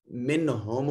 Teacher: نون ساکن کے بعد ہا حرف اظہار ہے، نون کو ظاہر کر کے پڑھیں گے